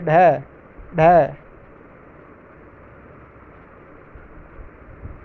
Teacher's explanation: थटा जो वर्गीकरण किया है उत्क्षिप्त ध्वनि यानी जब जीभ ऊपर की ओर तेजी से उठकर तालु को हल्के से स्पर्श कर कर एकदम से यानी झटके से नीचे आ जाती है जीभ तालू को पहले स्पर्श करती है और फिर झटके से नीचे आती है